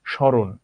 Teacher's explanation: just ময়ের প্রভাবের কারণে একটা চন্দ্রবিন্দু চলে আসবে উচ্চারণে, আর কিছু না, একটু অনুনাসিক হবে